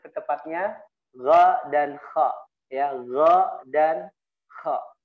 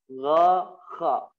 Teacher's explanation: tempat keluarnya huruf gha dan kha, disebut dengan adnal halqi. Adnal halqi yaitu ujung tenggorokan.